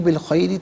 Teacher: را کے نیچے زیر ہے، را کو باریک کر کے پڑھیں گے